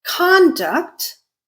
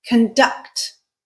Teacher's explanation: Most importantly, I changed the stress pattern. I changed which syllable out of the 2 syllables in that word is stressed.